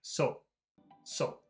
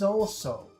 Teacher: it's a very long very big sound it's two sounds